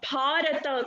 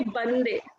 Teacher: Bharata contains Mahaprana letter, whereas Bande means when I come, you say Bande, that doesn't contain Mahaprana letter